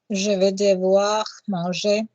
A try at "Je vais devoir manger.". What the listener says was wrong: Now, just for me again, slow it down a smidge and don't have a pause between devoir manger. Je vais devoir manger. This refers to a video on which words do we stress, and we do not stress modal verbs. Yeah, we don't stress je vais devoir le faire.